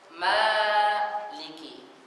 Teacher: Ma di situ ada gunnah tapi tidak dipanjangkan. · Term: angkos ma takun